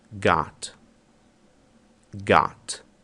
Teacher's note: nos Estados Unidos e Canadá, este som se assemelha muito ao som de A do português. Então vocês vão notar esta pronúncia em inglês americano.